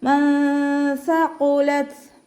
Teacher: നൂൻ സാക്കിനയെ മറച്ച് വെച്ചിട്ട് മണിച്ചോതി കൊടുക്കുക